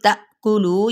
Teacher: یہاں پہ تا پہ ہم جھٹکا دیں گے، لو کو 4 حرکت لمبا کریں گے